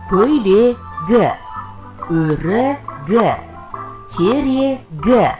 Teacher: Егер сөз соңында К дыбысынан кейін дауысты дыбыс келсе, К дыбысы Г дыбысына өзгереді.